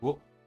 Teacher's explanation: Pronounce it O, like in the word open. That's right, this is pronounced the same as the vowel O. The W is silent.